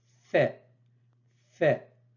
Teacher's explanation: se prononce au niveau des incisives supérieures qui se positionnent sur la lèvre inférieure